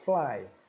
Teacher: o dente superior vai encostar no lábio inferior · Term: sons lábio dentais